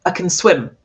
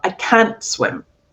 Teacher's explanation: if I'm emphasizing that it's negative, then you'll hear the pure vowel